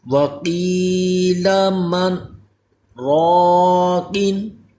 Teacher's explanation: جی قاف کو پر بھی کرنا ہے، یہ حروف مستعلیہ ہے